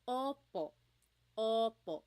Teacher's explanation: Sometimes I think of it like having a ball in your mouth. Your tongue gets kind of pushed back and down a little bit and the inside of your mouth is open and wide. So O like oppo Oo. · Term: letter O